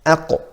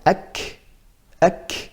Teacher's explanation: Aqu, it's touching further back. And ak, that's touching a bit forward. That's where the hard and soft palate are.